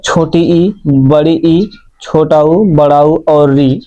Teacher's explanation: समृत का अर्थ बंद सा यानी मुख जो होता है कम खुल खुलता है। मुख कम खुला हुआ होता है। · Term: समृत स्वर